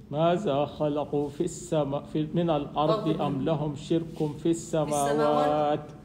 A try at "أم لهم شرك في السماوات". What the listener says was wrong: أم لهم شرك في السماوات. في السماوات مدها. قل أم لهم شرك في السماوات.